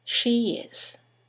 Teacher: there is a semi-vowel, y, that links the vowel at the end of she to the vowel at the beginning of is